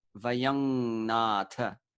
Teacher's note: It's anuswara, so we don't close the lips on M.